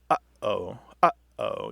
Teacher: We kind of restrict the airflow in the back of our throat. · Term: glottal stop